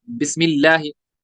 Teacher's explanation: लफ्ज अल्लाह के नाम से पहले जेर है तो इसको बारीक पढ़ेंगे